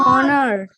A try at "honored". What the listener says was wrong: It's not honored. Okay, beta, it's not honored. It's honored. We keep H silent. Honored.